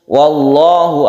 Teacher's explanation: wallahu adalah zuljalal yang sebelumnya ada Fathan sehingga membacanya tebal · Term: tafkhim